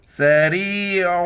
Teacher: عین کے وقت عین کو گلے سے کرنا ہے